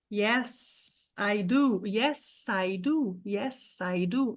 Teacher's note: quando você fala yes, I do, yes, I do, yes, I do, não pode reduzir para um som de Z.